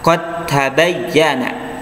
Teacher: Ya, contohnya adalah qad tabayyana, ya, qad tabayyana dibaca langsung masuk ke huruf ta, ya, nggak usah kita masuk ke huruf dal dulu, ya, dikol-kolahkan dulu baru masuk ke ta, enggak, itu salah, tapi langsung ke ta, qad tabayyana, ya.